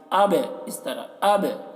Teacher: با میں قلقلہ کرنا ہے، با میں آواز ٹکرائے گی